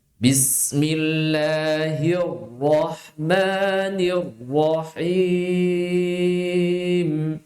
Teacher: Tebal rnya. Kenapa? Di situ rnya berharakat fathah. Jadi kita tebalkan.